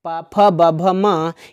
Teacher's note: इनका जब हम उच्चारण करते हैं तो जीभ की छोड़ो हमारे जो दोनों ओष्ठ होते हैं वो आपस में चिपक जाते हैं, इसीलिए ओष्ठ से उच्चारण होने के कारण इन प फ ब भ म को ओष्ठ वर्ण कहा जाता है।